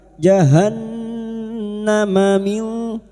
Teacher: nun sukun bertemu kaf ikfa hakiki kita samarkan bunyi nun sukun dan mendengung selama 3 harakat